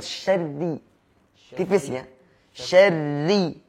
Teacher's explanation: karena ra itu jika berharakat kasrah maka dia tipis. Ketika berharakat fathah atau dhammah maka dia tebal.